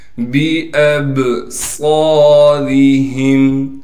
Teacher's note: हमज़ा को बा से मिलाना है इसलिए कि बा साकिन है और बा पर कलकला किया जाएगा